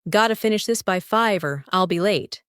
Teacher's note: Notice how got to becomes gotta, and or I will becomes Ryle. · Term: reductions